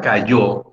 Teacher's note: la sílaba tónica es la última y para el caso está marcada como una tilde un acento